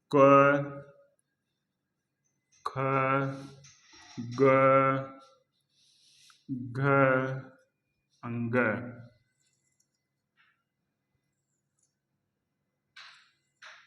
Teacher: क वर्ग का जो उच्चारण स्थान है वो कंठ होता है।